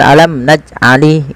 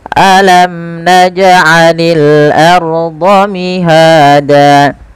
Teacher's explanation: Alam, jelaskan mimnya karena dia izhar syafawi. Naj'ani, pantulkan jim ketika ia berharokat sukun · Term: qalqalah